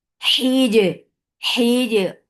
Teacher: Jim will get sifa of qalqala and qalqala should be very nicely done. And there should not be any flow of breath or sound because jim is majhura letter.